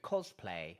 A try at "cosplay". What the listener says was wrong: Yeah, that's quite good.